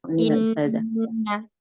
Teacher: Inna apalagi dia bertemu misalnya huruf bertasydid setelahnya ya. Inna langsung ditekan hamzahnya. Enggak in lah.